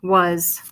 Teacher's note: my A is going to sound like a short U sound, and my S is going to sound like a Z.